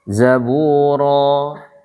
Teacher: dia tidak dihentak di hamzah. Zaburo gitu aja. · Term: mad iwad